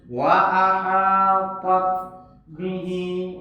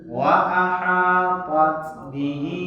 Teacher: Jadi kalau dia sukun, ada sifat ta'nis namanya. Ta'nis itu ada angin keluar.